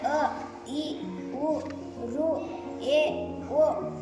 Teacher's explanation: ಒಂದು ಮಾತ್ರಾ ಕಾಲದಲ್ಲಿ ಉಚ್ಚರಿಸಲ್ಪಡುವ ಅಕ್ಷರಗಳಿಗೆ ಹ್ರಸ್ವಸ್ವರ ಎಂದು ಕರೆಯುವರು